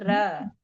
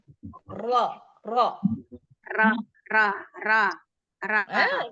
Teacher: tapi ro-nya minta ditebelin, jangan jadi ra, tapi jadi ro